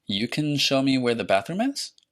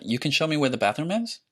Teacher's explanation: Notice how I went up in pitch at the end of that. · another way of doing a sentence in English, and in many other languages, is a rising intonation at the end of the question.